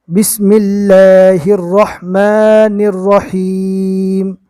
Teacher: دونوں رو کو پور پڑھنا ہے اور اللہ کے لام کو باریک پڑھنا ہے۔ اللہ کے لام سے پہلے اگر زیر آتا ہے تو اللہ کے لام کو باریک پڑھا جاتا ہے، اور رو کے اوپر زبر ہے، تشدید والی رو کے اوپر زبر ہے، اس لیے تشدید والی رو پور ہوگی۔